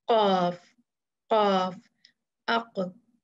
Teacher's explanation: तो कॉफ में देखें, जो पिछली जड़ है जुबान की, पिछला हिस्सा पोर्शन है, वो ऊपर के नरम तालु एकदम गले से जो ऊपर होता है उसको लगता है।